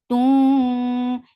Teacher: idgham with gunna, so keep the sound in your nose for a longer time.